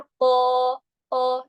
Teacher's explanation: الف بھی موٹا ہو جائے گا اس کے ساتھ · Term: الف مدہ